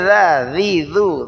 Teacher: ذال زبان کی نوک اوپر والے دانتوں کی نوک سے